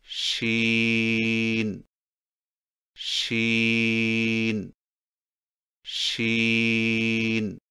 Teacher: شین کی ادائیگی میں زبان کے درمیان کو تالو کی طرف بلند کرتے ہوئے باریک اور پھیلتی ہوئی آواز میں پڑھیں، یعنی شین شین شین۔